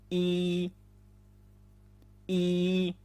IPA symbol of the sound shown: -iɿ